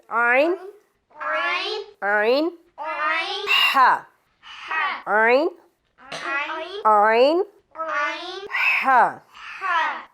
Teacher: आइन और हा, ये हलक का जो दरमियान वाला हिस्सा है यहाँ से आइन और हा का मखरज निकलेगा